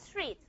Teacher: Start with a s then you have a voiceless stop which is t.